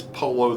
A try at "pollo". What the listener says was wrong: It's Pollo. Pollo. P-O-Y-O, Pollo. Or P-O-L-L-O, Pollo. It's a yeah sound in Spanish.